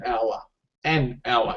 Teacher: even though there is an H but that H uh being a consonant is actually silent